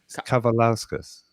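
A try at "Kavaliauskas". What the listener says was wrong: There's an S before the K.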